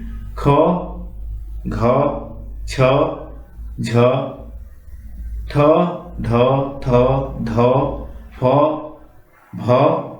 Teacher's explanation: जिनके उच्चारण में ह कार जैसी ध्वनि विशेष रूप से रहती है और श्वास अधिक मात्रा में निकलती है उन्हें महाप्राण कहते हैं।